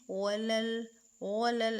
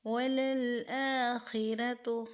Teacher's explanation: اس لام کو خیال رکھیں گے، اس کو ہیوی نہیں کریں گے، جیسے کہ وَلَلْ ایسے نہیں، وَلَلْآخِرَةُ، خا کو پر کریں گے، حروف مستعلیہ میں سے ہے، را کے اوپر زبر ہے، اس کو بھی ادا کرتے ہوئے را کو پر کریں گے۔